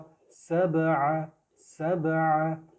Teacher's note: سین کی آواز میں سی ٹی کی آواز بزنگ ساؤنڈ آئے گی